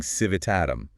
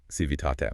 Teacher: So, civitatum begins to lose its tail, but the heavy accent stays locked on that T sound. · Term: spoken accent